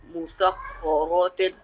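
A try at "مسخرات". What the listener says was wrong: Musakha. Musakha. Ra you will stretch a little bit because this is the alif madda here. Musakharatin.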